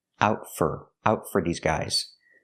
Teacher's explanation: For is pronounced fur because it's not stressed.